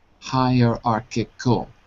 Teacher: stress is on the third syllable